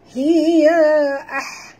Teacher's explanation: ha besar ataupun ha simpul bunyinya dalam pada halkum